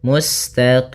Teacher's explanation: boleh kita panjangkan dua harakat boleh empat harakat boleh pula menjadi enam harakat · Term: Mad Arid di sukun